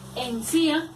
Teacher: Encía lleva la acentuación en la I, es decir, en la vocal cerrada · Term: hiato